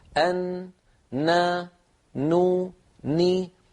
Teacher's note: صوت الغنة مع قرع اللسان مجموعهما يشكل حرف النون